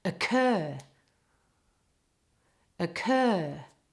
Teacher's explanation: all the emphasis is on the second part